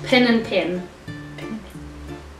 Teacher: apparently the E and I sound the same